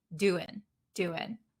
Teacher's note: when we're talking very quickly we skip the nasal sound and we just say do an in okay how's it going